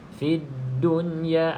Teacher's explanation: Jadi bacaan dia kena izhar lah. Nama pun izhar mutlak, bacaannya izhar, iaitu jelas nun tu. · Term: izhar mutlaq